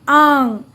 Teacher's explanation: बच्चों, नासिका चिह्न का उच्चारण 'आंग' होता है, और जब हम इसका उच्चारण करते हैं, तो ध्वनि हमारी नाक और मुंह दोनों से निकलती है, और मुंह पूरी तरह से खुलता है, इस तरह: आंग।